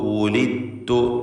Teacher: ദാലിനെ പൂർണ്ണമായും തായിലേക്ക് ഇദ്ഗാം ചെയ്യുന്നു. ദാലിൻ്റെ ശബ്ദം അല്പം പോലും കേൾക്കുകയില്ല. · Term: ഇദ്ഗാം മുതജാനിസൈൻ സഗീർ